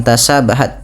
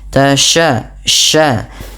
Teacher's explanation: Intisyarus fil fam karena sifat tafasyinya